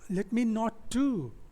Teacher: Not क्या है, unstressed है, two stressed है।